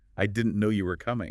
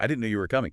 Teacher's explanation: try it with a little lift, a little emphasis on no and coming.